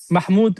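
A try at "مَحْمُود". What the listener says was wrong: You got to say the vowels.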